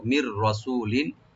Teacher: মির রাসূলিন নুন সাকিন পর রা আসছে, এখানে আমরা ইদগাম করব কিন্তু উইদাউট গুন্না ছাড়া আমরা ইদগাম করব। মির রাসূলিন, রাটাকে ডিপ করে পড়বেন।